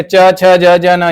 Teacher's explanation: च तालव्य में आ जाता है।